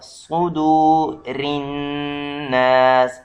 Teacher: صاد یہ بھی حروف مستعلیہ یعنی اس کو بھی تفخیم کر کے پڑھا جائے گا